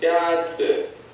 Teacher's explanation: The first tone is a high, level tone.